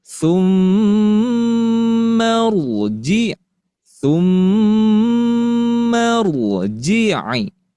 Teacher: ro di sini termasuk ke dalam ro tafkhim atau dibaca tebal